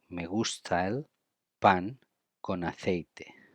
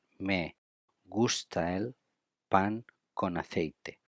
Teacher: we link A and E and N and A